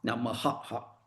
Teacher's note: a distinct hard aspiration represented by the letter ha